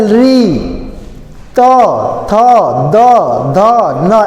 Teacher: ऐसे बोलेंगे तो आपका जीभ जो है जाके दांत से स्पर्श करता है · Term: दंत्य वर्ण